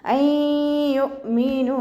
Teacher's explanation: നൂൻ സാക്കിനയ്ക്ക് ശേഷം ഇദാം ബിഉന്നയുടെ അക്ഷരമായിട്ടുള്ള യാ വന്നു. നൂൻ സാക്കിനയെ മണിച്ച് ലയിപ്പിച്ചു കൊടുക്കുക കേട്ടോ.